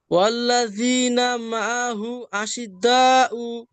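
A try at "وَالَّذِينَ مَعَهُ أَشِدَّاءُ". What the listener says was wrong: দা এত টান হয় কেন? আশিদ্দা উ, আশিদ্দা উ, বাস ফাতা তবিলা হলে হবে।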